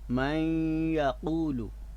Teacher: من کا جو نون ساکن ہے وہ ہم یائے مشدد میں ملا رہے ہیں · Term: ادغام